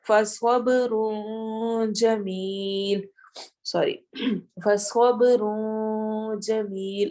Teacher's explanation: نون ساکن کی آواز چھپے گی کیونکہ آگے جیم آ گیا ہے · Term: اخفا